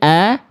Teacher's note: huruf tipis itu vokal A-nya murni karena enggak ada kehalang bunyinya oleh pangkal lidah. A kalau vokal A gemuk, pangkal lidahnya naik bunyinya begini asalnya. · Makanya dia turun huruf tipis itu vokal A-nya murni karena enggak ada kehalang bunyinya oleh pangkal lidah. A kalau vokal A gemuk, pangkal lidahnya naik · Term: vokal A murni